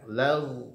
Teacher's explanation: Lag ya, karena ghain itu tidak punya sifat qalqalah. Ghain itu punya sifat rokhawah, mengalir bunyinya.